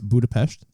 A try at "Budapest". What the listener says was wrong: Budapest. Pesh. Budapest. A picture, an H at the end, not a T. Well, it's just how they pronounce things over there. Because they're not American.